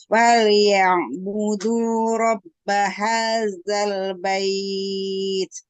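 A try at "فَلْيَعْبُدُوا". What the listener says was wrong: Sudah bagus, Pada huruf ain jangan ke dalam. Fal ya, keluarin dia suaranya jangan ke dalam.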